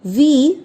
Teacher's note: व की मात्रा यहाँ पर बड़ी ई की है तो आपको लंबा खींचना है